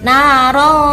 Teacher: Di sini kalau dalam ilmu tajwid dinamakan bacaan ikhfa. Jadi ada tanwin bertemu dengan huruf zal. Cara bacanya samar.